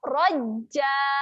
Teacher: Okey. Untuk bacaan di hujung, kita tahan pada huruf jim, raj. Kemudian kita ngangak rajja.